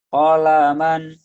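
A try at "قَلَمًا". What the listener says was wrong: Kolaman, bukan kolaman, bukan kolaman, nggak ada yang panjang. Kolaman,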